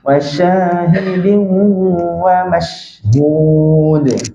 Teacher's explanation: huruf syin ni memang ada angin betul tapi ruang masa dia ada sifat rukhawah ruang masa dia lama